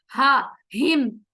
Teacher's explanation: जो हिम, इलाफी हिम में हा है, वो हलक के आखिरी वाले हिस्से से अदा होगा, हा हिम। रिह में जो हा है वो हलक के बीच से अदा होगा, तो इसे हमें डिफरेंशिएट करना है।